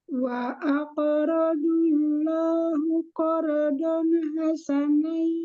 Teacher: Allah itu lam alif jalalah dibaca tebal karena sebelumnya berharokat doma. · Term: lam jalalah dibaca tebal